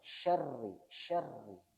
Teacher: karena rnya ini ada tasdidnya jadi perlu ada kayak di dobelkannya